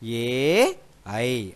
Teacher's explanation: ఏ ఐ అనే రెండు అక్షరాలు కూడా చదివేటప్పుడు గొంతు దగ్గర నుండి వచ్చి దవడ సహాయంతో బయటకి శబ్దం అనేది వస్తుంది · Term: కంఠ్య తాలవ్యములు